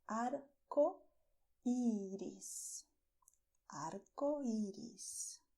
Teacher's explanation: I did not make RR here. It is only the tip of the tongue touching the front teeth.